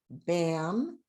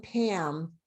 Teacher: you say bam and pam you're going to hear the vibra feel the vibration with bam not with pam